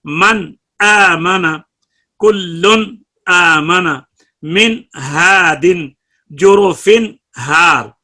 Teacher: نون کے بعد جب حمزہ اور ہا آئے تو نون کا اظہار بڑا ہی کامل ہے، اعلیٰ درجہ کا اظہار ہے. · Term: اظہار اعلیٰ